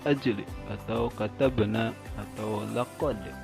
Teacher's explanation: Lafaz-lafaz tersebut dibacanya dipantulkan karena huruf qalqalah yang disukunkan berada di tengah-tengah kalimat, yaitu qaf, jim, dan dal. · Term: qalqalah sugro